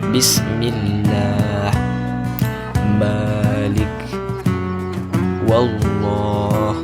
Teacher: Huruf ba mim [musik] wau. Tempat keluarnya dua bibir saling bersentuhan